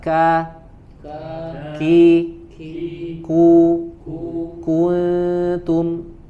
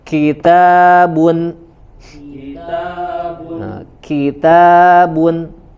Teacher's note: dia ada anginnya keluar tetapi tidak begitu dominan ya, yang lebih dinampakkan harus syiddahnya. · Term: sifat syiddah